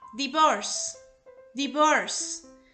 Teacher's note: See how this verb finishes in a whispered sound? S. So divorce in the past tense will be divorced.